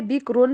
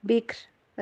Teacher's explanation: را کو اگر ویسے بکرون پڑھیں گے را موٹی پڑھی جائے گی، اگر وقف کریں گے تو ایسے بکر، را کو باریک